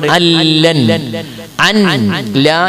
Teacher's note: അതിന് ഉദാഹരണം ഇവിടെ ഉണ്ട്, അല്ലൻ അൻ ലാ എന്നുള്ളത് ഉച്ചരിക്കുമ്പോ നൂന് കേൾക്കൂല, നൂനില്ല തന്നെ ചിത്രത്തിൽ ഉണ്ടാവൂല. നൂനിന് പകരം നൂനിനെ ലാമാക്കി മാറ്റി ലാമിന് ലാമിൽ ഇതാം ചെയ്യും. അപ്പൊ അല്ല എന്നായി മാറും, അതിന് ഇതാം വിലാ ഉന്നാന്ന് പറയും.